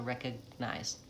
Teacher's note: I'm not releasing that G, I'm just releasing the N, releasing into the N. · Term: stopped G